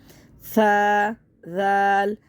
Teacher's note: زال میں زبان دانتوں کے درمیان میں آئے گی، اور سا میں بھی زبان دانتوں کے درمیان میں آئے گی.